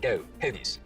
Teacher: Now, another thing that starts to happen as we get downwards Philly is that the goat diphthong starts to move forwards in the mouth